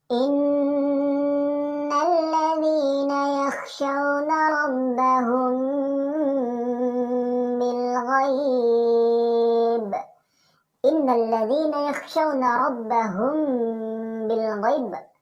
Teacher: Secara definisi, ikhfa syafawi adalah apabila mim sukun ketemu dengan salah satu huruf ikhfa syafawi yaitu ba, maka cara membacanya yaitu mim sukun dan juga huruf ba digabung dan kita dengung sebanyak 2 sampai 3 harokat. Namun dalam penyebutan huruf ba tidak diucapkan secara sempurna.